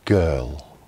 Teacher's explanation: Position the back of your tongue at the back of the roof of your mouth on what's called the soft palate. When you allow voiced air to come through, it's stopped by your tongue and then released when you lower your tongue from the top of your mouth. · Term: voice consonant sound G